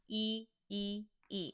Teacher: It starts with silent character, so look at the vowel only, that's going to be i. I i i, it's a narrower sound, most more close to ee when you say it.